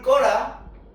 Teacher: 이건 끄 플러스 어라거든요. 그래서 으가 탈락한 거예요. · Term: 으 탈락